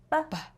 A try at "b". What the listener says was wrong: Yeah, be careful. Remember, we have to make it a really short sound. We don't say ba, we say b. B.